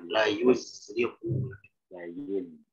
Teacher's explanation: lebih jelas sofirnya ya.